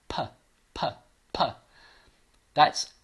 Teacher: I'm breathing through, but I'm not voicing it. I'm not using, so this is an unvoiced sound.